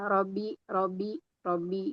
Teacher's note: Kemudian menghilangkan tasdid. Menghilangkan tasdid misalnya kayak rabbi cuman ro aja. Rabbi robi robi itu juga enggak boleh.